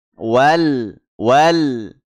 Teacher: alif lam bertemu huruf qof alif lamnya dibaca jelas · qamariyah ini Alif lamnya jangan sampai memantul ya jangan sampai mantul kemudian jangan sampai terjadi gunah ya jangan didengungkan jangan ditahan jangan juga disaktah ya hati-hati tidak W ya jangan dipantulkan ini perlu kati-hatian kemudian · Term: alif lam qamariyah